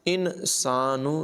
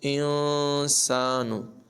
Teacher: نون ساکن کی آواز کو ناک میں چھپا کر پڑھیں گے ، انسانو نہیں پڑھیں گے بلکہ انسان، قتل الانسان ما اکفرہ، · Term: اخفا